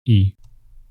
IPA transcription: i